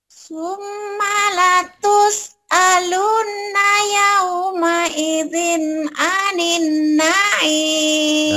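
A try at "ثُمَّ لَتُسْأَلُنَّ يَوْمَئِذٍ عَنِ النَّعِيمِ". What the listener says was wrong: Udah bisa tapi di coklat-coklatnya kurang nahan. Ini M-nya kan 3 tuh. N-nya 3 ini namanya gunah ya. Ini ada 2 persis nih. Huruf gunah cuma 2. Setiap mim dan nun bertasdid tuh. Bener nih 2 tuh. M-nya banyakin, M-nya 3 tuh.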